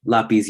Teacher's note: usually has an accent the syllables are la and peace and stress is on the last syllable since it ends with a z